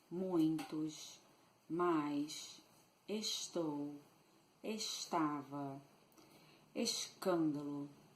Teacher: the influence of the Portuguese accent can be perceived by means of the pronounced S. We shush a lot. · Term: sh sound